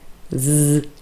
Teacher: z is a voiced consonant